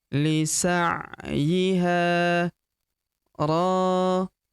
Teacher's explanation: huruf ro kita panjangkan dua harakat karena terdapat tanda alif di depannya